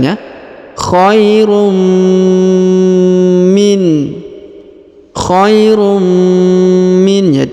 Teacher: kita tahan dan tekan kemudian kita dengungkan ya dua harakat